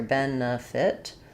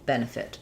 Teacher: Same same pronunciation for both. So, first syllable stress here. Ben, fit. We have the e vowel in the first syllable and then either an i or an uh very reduced vowel in the second syllable and an ih in the second syllable, last syllable.